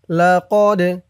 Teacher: দাল কলকলার হরফ ধাক্কা দিয়ে পড়তে হবে।